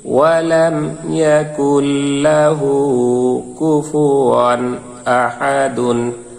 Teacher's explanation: কুল, লামের জবর লা, হার উল্টা পেশ একালিফ হু, কাফের পেশ কু, ফায়ের পেশ ফু, ওয়ার দুই জবর ইজহারের কায়দা ওয়ান, স্পষ্ট উচ্চারণ হবে। তানবিনের বামে এই যে হামজা আসছে, আলিফের জবরজের পেশ দিলে আলিফের উচ্চারণ হামজা হয়, তাই এটি ইজহারের হব ধরতে হবে।